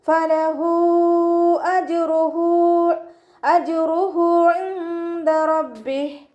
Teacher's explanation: മദ് സില കുബറ കേട്ടോ. ഹ വമീറിൻ്റെ കൂടെ മദ് വന്നു. മദ്ദക്ഷരത്തിന് ശേഷം ഹംസ വന്നു. അപ്പോൾ നമ്മൾ 4, 5 കൗണ്ട് നീട്ടിക്കൊടുക്കണം.